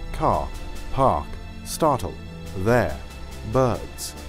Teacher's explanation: Meanwhile, my more of a neutral northern kind of accent is non-rhotic, meaning that I generally do not pronounce the R if it doesn't come before a vowel. · I don't pronounce the R in any of those words